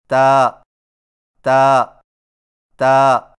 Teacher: تا کی ادائیگی میں زبان کی نوک کو ثنایا علیہ کی جڑ سے لگا کر باریک آواز میں پڑھیں، یعنی تا تا تا۔